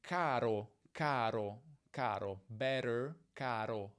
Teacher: È lo stesso suono essenzialmente di caro, caro, caro, better, caro, con la punta della lingua che tocca gli alveoli, cioè la zona del palato immediatamente dietro i denti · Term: la monovibrante, il tap